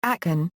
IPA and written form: əˈkæn (Akan)